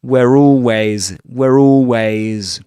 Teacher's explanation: But in this accent, the R sound, the consonant R sound is only pronounced if after it there's a word beginning with a vowel sound such as always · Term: linking R